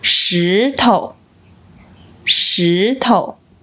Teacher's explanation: When used as a suffix, it doesn't carry specific meaning and is pronounced with a neutral tone. A quick side note, in daily Taiwanese Mandarin, we often just pronounce it with the second tone.